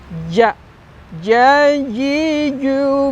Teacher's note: ternyata ja ini ada di tengah lidah kita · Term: huruf Jim